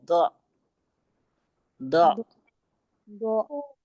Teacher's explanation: हमारी जबान की करवट जो है वो ऊपर की दाढ़ों के मसूड़ों से लग जाए, ठीक है। द, दो दाल और दो में फर्क आना चाहिए।